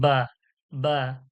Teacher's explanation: দুই ঠোঁটের ভিজা অংশ হতে পাতলা আওয়াজে